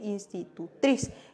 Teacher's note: nosotros vemos la sílaba tónica ¿dónde se encuentra? Se encuentra en la última posición